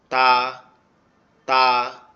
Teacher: তা অক্ষরটা হচ্ছে আমাদের জিহ্বার আগা উপরের দুই দাঁতের গোড়ার সঙ্গে লাগবে